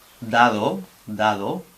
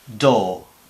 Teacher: Pero en inglés la lengua la subimos hacia los alveolos.